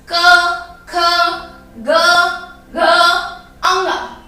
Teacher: इनको बोलते समय हमारी जो आवाज है वो कहां से निकलती है? हमारे कंठ को छूकर बाहर निकले